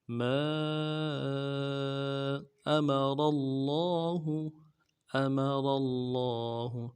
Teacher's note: سے پڑھیں گے، میم کو بھی نرم سے ادا کریں گے، را کو موٹا کریں گے، را کے زبر کو آگے لفظ اللہ کے لام کے ساتھ ملائیں گے ، لفظ اللہ کے لام کے اوپر تشدید بھی ہے، زور